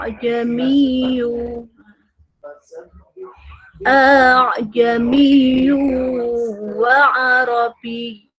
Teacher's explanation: mengucapkan bunyi hamzah yang kedua pada lafaz a'jamiyu di dalam surat Fusilat atau Hamim Sajdah ayat 44 dibaca setengah, yaitu antara hamzah dan alif. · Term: tashil